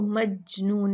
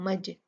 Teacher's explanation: جیم جو ہے یہ قطب جدین قلقلہ حروف میں سے ہے تو ہم یہاں پر جیم کو ہلا کے پڑھیں گے، مج، اس کو مجنون نہیں پڑھیں گے، مجنون نہیں، مج مج، اور مجا بھی نہیں ہوگا، مج، جلدی سے جیم کے مخرج کو چھوڑ دیں گے۔